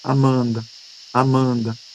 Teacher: esse A inicial, ele é muito mais forte do que o A final